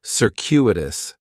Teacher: The stress is going to be on that second syllable. And that cu is kind of like you're saying the letter q.